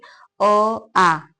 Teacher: कंठ से उच्चारण करिए। अ आ, ये दोनों जो होते हैं कंठ से उच्चारित होते हैं।